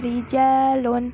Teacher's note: bacaan ra harus ditarqiq atau tipis